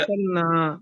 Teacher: रा साकिन से पहले जबर है, इसलिए पुर होता है।